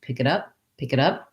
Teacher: pi that's because when we link the the pic and it the k kind of jumps on to the beginning of the next word i don't really have a break there